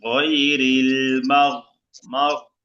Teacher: গয়নটা মোটা হবে গলার মাঝখানে